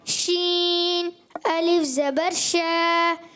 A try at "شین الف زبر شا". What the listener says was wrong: اچھا شین میں جو چھ جیسی آواز نہ ہے, چین چین یا شین, شین بولنا ہے, شین بولنا ہے, شین, سختی نہیں کرنی.